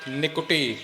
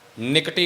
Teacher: ਕਕੇ ਦੇ ਔਂਕੜ ਦਾ ਪੂਰਾ ਉਚਾਰਨ ਕਰਨਾ ਹੈ ਨਿਕਟੀ ਇਕੱਠਾ ਨਹੀਂ ਬੋਲਣਾ ਤੇ ਨਿਕੁਟੀ ਵੀ ਨਹੀਂ ਕਹਿਣਾ ਨਿਕੁਟੀ ਦੇਹ ਦੇਖ ਧੁਨ ਉਪਜੈ ਮਾਨ